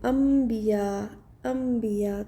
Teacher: تو یہ قاعدہ بدل گیا کہ نون ساکن کے بعد با آ گیا، تو پھر وہ نون نہیں پڑھیں گے بلکہ ساؤنڈ کنورٹ ہو گئی، بدل گئی میم میں، تو اس لیے یہ چھوٹا سا میم لگا دیا ہے. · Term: اقلاب